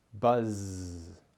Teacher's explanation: The Z sound is a buzzing sound. You can compare it to the sound of a bee, which buzzes.